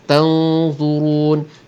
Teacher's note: ikhfa yang ni kita kena tebalkan sikit dengungnya kerana nun mati tu bertemu dengan huruf-huruf yang isti'la, huruf-huruf yang agak tebal bila disebut, maka dengungnya pun tebal. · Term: ikhfa hakiki